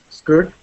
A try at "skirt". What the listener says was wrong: Okay, so class, we would not say skirt. Okay, we do not pronounce that I as a E sound. We don't say skirt. We say skirt.